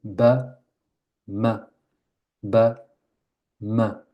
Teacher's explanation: C'est les lèvres qui se ferment. C'est le même point de prononciation.